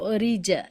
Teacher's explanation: را کو زیر کے ساتھ ہے تو اس کو باریک پڑھیں گے